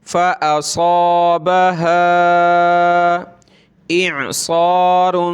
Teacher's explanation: ہوں گے اور مد کرنا ہے فا پر ہم نے، فَأَصَابَهَا، یہاں مد کریں گے ہا پر اور صاد کو موٹا کریں گے